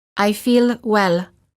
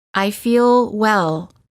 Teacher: notice how the l is prolonged by keeping the tongue up longer